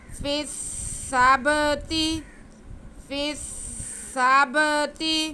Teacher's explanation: آگے تا کے نیچے زیر ہے، اسے بالکل نہیں کھینچنا